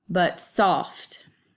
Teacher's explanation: where you have a foot that's unstressed stressed so it kind of makes this noise like buh-bum